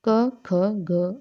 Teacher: इन व्यंजन ध्वनियों के उच्चारण में जीवा के पिछले भाग से कोमल तालु का स्पर्श होता है, वो कंठे ध्वनि होते हैं, मतलब जिनका उच्चारण कोमल तालु को टच करके होता है, तो वो क्या कंठे व्यंजन कहलाते हैं।